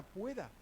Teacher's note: Una bilabial oclusiva sorda, que es la P.